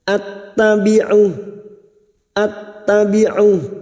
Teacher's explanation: Hati-hati membunyikan huruf hamzah setelah mad, jangan diseret ya. Harus dibaca jelas karena hamzah sifatnya siddah, tertahannya suara